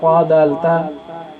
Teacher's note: زبان کی نوک اور ثنایا علیہ کی جڑ، مسوڑے، وہاں سے یہ تینوں حرف ادا ہوتے ہیں: طا، دال، تا۔